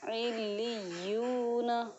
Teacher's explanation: حروف مدہ ہے یہاں پر، واو مدہ، تو اس کی ایک الف کے برابر اس کو ہمیں کھینچنا ہے